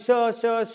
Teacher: उष्मन म्हणजे वायू, उष्मन म्हणजे वायू असतो, आणि वायू म्हणजे आपल्या मुखावाटे श म्हणताना जो वायू यालाय तो दाताला आडल्या चाललाय, आणि दातासोबत वायूचं घर्षण व्हायलंय, घर्षणामुळे उष्णता निर्माण व्हायली, म्हणून त्याला उष्मी किंवा घर्षक असं नाव दिलेलं आहे.